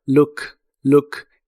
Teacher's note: La doble o de esta palabra se pronuncia como una u corta y explosiva